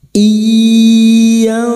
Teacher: Iyantahu, nun sukun bertemu ta ikhfa hakiki, nun sukun dibaca samar dan mendengung selama 3 harakat